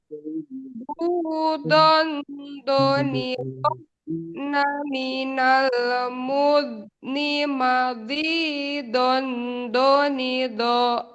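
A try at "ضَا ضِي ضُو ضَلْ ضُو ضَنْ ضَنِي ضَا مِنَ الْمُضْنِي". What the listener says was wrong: Awalnya ini sudah bagus. Tapi mundur-mundur ke belakang ini jadi maju lagi lidahnya. Suaranya jadi tipis itu. Harusnya tebel dotnya. Maldil, dhon, dhonidha.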